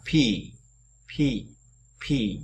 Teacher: Âm này là âm đây, cái cổ họng ta không, nó không có rung, nó không có tiếng ở đấy